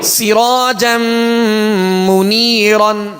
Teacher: سین کو سیٹی کی آواز میں پڑھیں گے. سین کے نیچے زیر ہے، آواز کو گرا کر پڑھیں گے مگر بغیر کھینچے بغیر جھٹکا دیے.